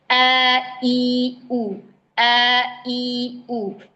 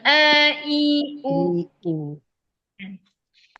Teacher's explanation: harus sesuai dengan makhrajnya. Makhrajnya di pangkal tenggorokan.